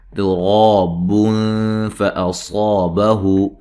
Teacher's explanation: تا کو باریک پڑھیں گے اور را کو موٹا ادا کریں گے